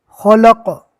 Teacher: قوف کو پور پڑھیں گے اور خو کو بھی پور پڑھنا ہے